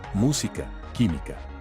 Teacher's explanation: Palabras esdrújulas. Estas palabras llevan la mayor fuerza de voz en la antepenúltima sílaba y todas llevan tilde.